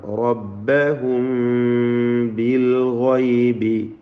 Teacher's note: تنذر الذين يخشون ربهم يخشون خائن تفخيم റബ്ബഹും റായിന് തഫ്ഖീം കൊടുക്കുക. സാക്കിന മീമിന് ഇഖ്ഫ ഷഫവി നൽകി ബായിന് മുമ്പിൽ മറച്ചു മണിച്ച് ഓതേണ്ടതാണ്